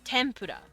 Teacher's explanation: It's technically an M sound, tempura, but like they really spell it with an N like this. Tempura. This is a consonant cluster.